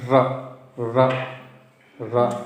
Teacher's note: एकेशाम मतलब कुछ आचार्यों के मत में जो ये रेफ है, रेफ मतलब ये जो रा है, ये दंत मूलीय है। र का उच्चारण दांत के मूल से करना।